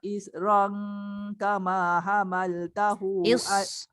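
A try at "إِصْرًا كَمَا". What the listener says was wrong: Sod tu tebal. Isran kama. Sod tebal.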